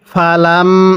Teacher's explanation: লামকে মিমের সাথে লাগিয়ে গুন্নাহ করব।